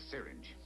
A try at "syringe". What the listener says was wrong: It's pronounced syringe, sir. You put the accent on the wrong syllable.